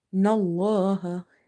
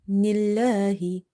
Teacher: This lam in the word Allah is light this time because of having kasra before it.